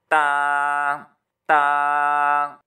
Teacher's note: ज़ुबान की नोक जब सनाया उलिया की जड़ से लगेगी तो इससे ता निकलेगा